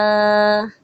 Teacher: جیم کے اندر جو ہے نا یہ بیچ میں مجہول پڑھنا ہے